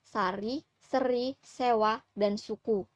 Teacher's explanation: Bunyi es merupakan bunyi tak bersuara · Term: frikatif alveolar